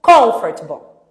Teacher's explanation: Sílaba tônica no com.